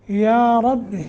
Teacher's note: را کے اوپر فتح ہے. را کے اوپر جب فتح یا ضمہ ہو تو اس را کو پر کرتے ہیں موٹا کرتے ہیں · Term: تفخیم